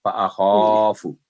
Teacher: فَأَخَافُ کو بھی شارٹ پڑھنا ہے، فو نہیں کرنا